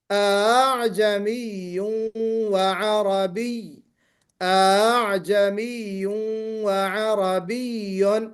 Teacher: یعنی نہ حمزہ کو آپ مد سے بدلیے اور نہ حمزہ کو آپ بالکل کلیئر کر کے پڑھیے، بلکہ ان دونوں کی درمیانی جو کیفیت ہے وہ یہ ہے کہ آپ سیکنڈ حمزہ کو، حمزہ ثانیہ کو آسانی اور سہل کے ساتھ پڑھیں